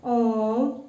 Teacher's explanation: उसको ह्रस्व स्वर से 3 गुना समय लगाकर बोलना चाहिए